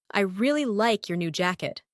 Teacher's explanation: The stressed words are really, like, new, and jacket. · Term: stress pattern